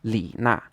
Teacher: this is pronounced with a third tone, then a fourth tone, Li Na. So this would be the correct way to say it.